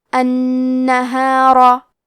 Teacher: یہاں حرف را پہ زبر ہے، تو ہم حرف را کو موٹی آواز میں پڑھیں گے